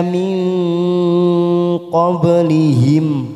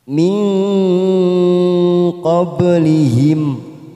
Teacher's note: Nun sukun namanya ikfa abad, kita samarkan bunyi nun sukun 3 ketuk. Min qablihim.